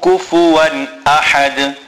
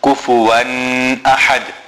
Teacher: There is no nasal sound on kufuwan. Many people read kufuwan ahad.